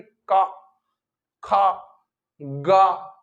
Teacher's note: तो इसमें जो आपकी ध्वनि जो आएगी, उच्चारण जब आप करेंगे, तो कहां पे कंठ वाले भाग से निकलेगी ध्वनि, इसलिए इनको क्या बोला गया है, कंठ व्यंजन।